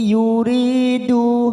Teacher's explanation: ri kasrah bertemu ya sukun, duma bertemu sukun masing-masing 2 harokat matobi'i